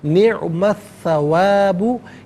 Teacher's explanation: निअमा में मीम पर ज़बर है, इसे अस्सवाबु की सा के साथ मिलाएंगे, दरमियान में से अलिफ़ यानी हमज़ा को हज़फ किया जाएगा। सा हरफ़ शमसिया है, हरफ़ शमसिया वो हरफ़ के जिस पर अलिफ़ लाम हो लेकिन लाम को पढ़ा ना जाए।